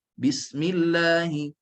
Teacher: bunyi sin itu mesti nafas berterusan, ada nafas berterusan, suara berterusan, bunyinya tak pendek. Safir ada bunyi siulan juga. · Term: hams, rakhawa dan safir